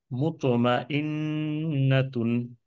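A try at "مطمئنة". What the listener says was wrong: very good মার্শাল্লাহ very good আরেকবার একটু খালি ট্রাই করি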